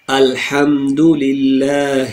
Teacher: ہا ہمارے تھروٹ کے آخری پوائنٹ سے، جس کو اقصی حلق کہتے ہیں